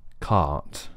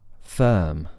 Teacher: for that is that there's lots of space in the mouth the back of the tongue is low really really flat creating lots of space in the whole mouth